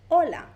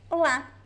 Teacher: In Spanish, the stress is at the beginning. In Portuguese, the stress is at the end. So in Spanish, we would say hola.